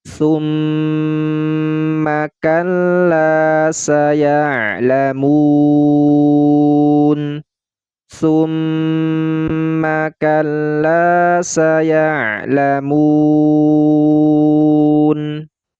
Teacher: Pada kalimat summa di sini terdapat guna pada huruf mim yang bertasydid